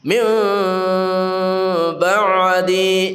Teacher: Karena ini seakan-akan ikhfa syafawi min ba'di yang lebih bagus kita baca dengan samar mimnya